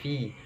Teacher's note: Fa sama, ada hembusan nafasnya karena di kasroh maka disempurnakan kasrohnya fi.